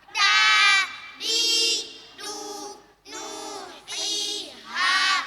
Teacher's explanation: Setiap fatah diikuti alif, fas diikuti ya sukun, damma diikuti wa sukun. Panjangnya satu alif atau dua harakat. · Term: Mad thai